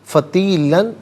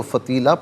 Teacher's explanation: جیم وقف جائز کی شارٹ فارم ہے، جس کا معنی یہ کہ یہاں رکنا جائز ہے۔ فتیلاً وقف کی صورت میں دو زبر کی تنوین الف سے چینج ہو جاتی ہے تو فتیلہ پڑھیں گے، آخر میں علامت وقف اندر 71 لکھا ہوا ہے۔